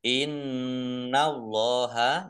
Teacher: nun tasdid dibaca mendengung atau gunnah. Ditahan ya, biar mendengung ditahan.